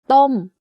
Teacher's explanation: my pitch goes up and slightly down by the time i finish saying the word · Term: falling tone